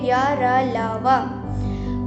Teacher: वायु न तो मुंह के किसी भाग को पूरी तरह छूती है और श्वास का अवरोध बहुत ही कम होता है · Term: अंतस्थ व्यंजन